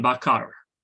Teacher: In Sebutan Baku, this R is pronounced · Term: syllable final R